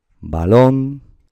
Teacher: la sílaba tónica será lon, es donde está la tilde